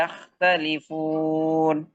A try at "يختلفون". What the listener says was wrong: কে আরো হেভি করেন, ইয়াহ, মোটা করে ইয়াখতালিফ।